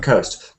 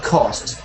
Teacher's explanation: They read coast and they don't say the diphthong sound O, they say cost. But you did it back to front for me, because most people find the O sound, R, easy, but the O difficult.